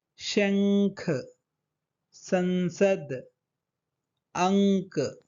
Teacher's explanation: बिंदु को हम नाक से उच्चारण कर रहे हैं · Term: अनुस्वार